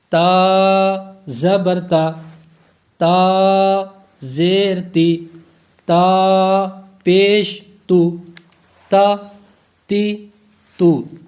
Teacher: زبان کی نوک اور اوپر کی دانتوں کی جڑ سے یہ ادا ہوگا